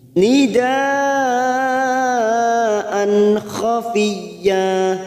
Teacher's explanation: Nidaan, hamzah yang berharokat fathah tanwin, fathatain yang bertemu kha, namanya bacaan idhar halqi, kita baca jelas tanpa mendengung. Nidaan khafiyya, an khafiyya masuk kata huruf ya yang bertasdid tanpa ditekan lama-lama, hanya masuk fiyya.